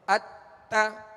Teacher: درست طریقہ یہی ہے کہ بغیر کھینچے بغیر جھٹکا دیے معروف پڑھیں گے